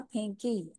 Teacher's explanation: फा के आगे नून गुन्ना की आवाज आएगी